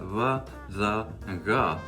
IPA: bʰ, dʰ, gʰ